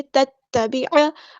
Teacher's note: عین کو وسطی حرکت مڈل تھروٹ سے ادا کریں گے